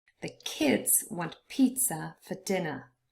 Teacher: pizza and dinner both consist of two syllables, but only the first one is stressed, and so that's why half of the word is only in purple.